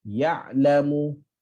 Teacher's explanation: Ain dia tak panjang. Pendek je. Lepasan suara tapi pendek. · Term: bainiyah